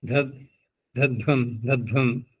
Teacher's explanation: ध्वम बोलने में क्या होता है कि जो धकार है वो छिप जाता है। ध्वम ध्वम महाप्राण के आगे अगला ही महाप्राण निकल रहा है।